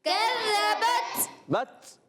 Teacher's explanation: اب یہاں کی آواز شدت کی وجہ سے سختی کے ساتھ آواز بند ہوتی ہے اور پستی اور نرمی سے سانس جاری ہوتا ہے